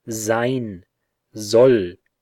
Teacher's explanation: weak sibilant which is found in German at the beginning of words before vowels